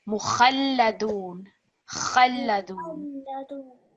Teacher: this letter kha, it's quite a strong letter. You really have to get in your throat to get it.